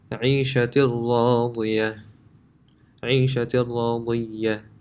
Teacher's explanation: This tanween, the noon, if it was by itself, it would be pronounced عيشة, but that noon sound is completely gone and it's connected to the ra.